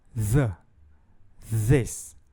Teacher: nós temos o fonema fricativo dental sonoro que soa como Z em sua pronúncia há uma vibração das cordas vocais por isso a sua classificação como sonoro